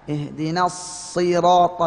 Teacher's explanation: sod makhrajnya sama dengan sin, hanya bedanya sod itu tebal ya, memiliki sifat tafkhim.